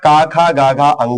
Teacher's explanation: क, ख, ग, घङ का उच्चारण स्थान कंठ है